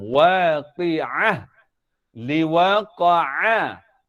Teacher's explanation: Pun kena tekan bunyi ain ni. Sebab ain kedudukan bunyinya di tengah-tengah halqum